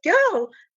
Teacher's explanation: if it is immediately followed by L, the vowel becomes long and the R is dropped